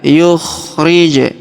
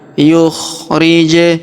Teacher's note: Huruf ja berharokat sukun kita pantulkan.